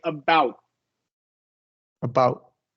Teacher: when it comes after a vowel at the end of a word, it should be stopped, meaning you go to the mouth position and you don't release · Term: stop T